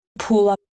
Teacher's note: in Georgian has initial prominence, so U is longer than A